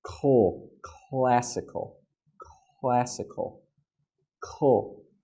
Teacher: So get your tongue ready, cool, and you make the k sound as your tongue is touching the top of your mouth to get ready for the l sound. So not gla, not classical, but classical, classical, cool.